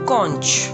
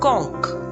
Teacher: in british pronunciation we can say konch and in american pronunciation we can say konk